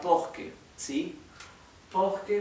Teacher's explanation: la r se pronuncia como casi como una jota nuestra